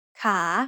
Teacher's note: The initial consonant is ข อ ไ ข ่ and it has the long vowel ส ร ะ อ า So once again, a high-class consonant with a live syllable ending results in a rising tone.